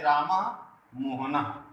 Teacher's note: विसर्ग का उच्चारण ह के जैसे होता है